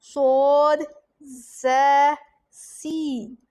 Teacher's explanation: यह हरूफे सफीरिया है, हरूफे सफीरिया, जिसे इंग्लिश में विसल लेटर भी बोलते हैं, यानी कि विसल लेटर हरूफे सफीरिया। ज़ुबान की नोक और दोनों दांतों के अंदरूनी किनारे से अदा होते हैं।